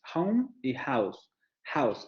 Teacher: los diptongos con que terminan con la vocal media cerrada, central posterior labializada